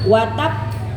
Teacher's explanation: Yang pertama watab, ditahan dulu baru dipantulkan. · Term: qalqalah